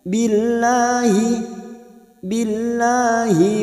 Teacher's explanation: lam jalala yang didahului kasrah kita baca tarkik atau tipis